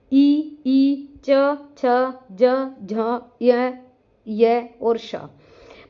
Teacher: तालव्य वर्ण जिसका हमारा उच्चारण स्थान तालु होता है।